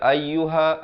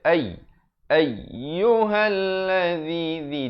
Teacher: tekankan ya itu bersabdu, jangan baca ayyuha tak betul, dia kena baca ayyuhalladzi di hujung lidah.